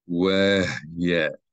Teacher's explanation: the hey should be pronounced as a consonant without a vowel following it. Immediately, without a vowel immediately following the hey consonant sound. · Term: silent schwa